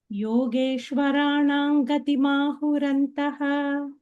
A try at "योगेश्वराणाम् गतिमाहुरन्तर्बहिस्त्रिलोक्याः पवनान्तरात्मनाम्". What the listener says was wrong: So antarbahihi would be one word. So let us not pause at the pada break over here. योगेश्वराणाम् गतिमाहुरन्तर्बहिस्त्रिलोक्याः पवनान्तरात्मनाम्. Antarbahi is one word.